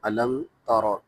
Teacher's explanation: اس میں را پر چونکہ زبر ہے تو را موٹا ہوگا